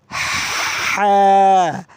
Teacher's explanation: এই হা বলতে হবে গলার মাঝখান থেকে হা বাতাস চালু থাকবে হা [মিউজিক] ডাল রাল রাল বলতে হবে